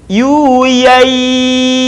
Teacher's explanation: suara kita tidak masuk rongga hidung